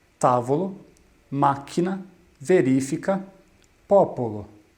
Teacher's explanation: as proparoxítonas possuem a sílaba tônica em sua antepenúltima sílaba